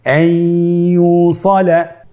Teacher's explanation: ইয়া হরফটি হলো ইদগামে বাগুন্নার হরফ। তাহলে নুনকে আমরা পরবর্তী হরফ ইয়ার সাথে মিলিয়ে গুন্নার সহিত পড়ব।